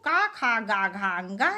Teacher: का वर्ग मने कु, का खा गा घा अंगा, इनका उच्चारण स्थान कंठ है। इसके अतिरिक्त ह्रस्व आ, दीर्घ आ का उच्चारण स्थान भी कंठ है।